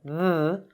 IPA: ð